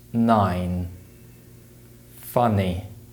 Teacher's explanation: sum the n Sound is produced in a similar way but the air is blocked with the tongue and ridge of the mouth